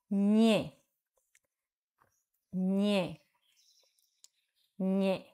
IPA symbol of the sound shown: ɲ